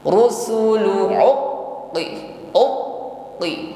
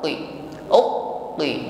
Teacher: Ketika menekan pada huruf qaf yang bertasydid, di sini seperti ada suara kita yang terputus ya, tertahan sejenak. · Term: sifat syiddah